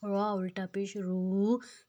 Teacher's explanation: اب جو را ہے وہ موٹا کرنا ہے، را کو تھوڑا موٹا کرنا ہے، اور الٹا پیش ہے تو ہم اس کو تھوڑا سا دو حرکت جتنا لمبا کھینچیں گے۔